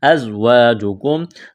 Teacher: کاف کو باریک کرنا ہے. ازواجکم زا میں سیٹی کی آواز پیدا کریں گے. الف مدہ ہے ایک الف کے برابر کھینچنا ہے.